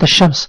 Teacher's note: كلمه الشمس ننتقل من الالف الى الشين مباشره ولا ننطق اللام لو قلت كلمه الشمس خطا لان هنا اللام لام شمسيه تكتب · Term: اللام الشمسيه